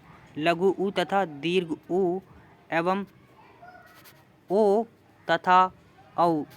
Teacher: तो आपका वृत्तमुखी स्वर यानी ऐसे स्वर जिनके उच्चारण के समय मुख जो हमारे होठ हैं वो गोलाकार हो जाते हैं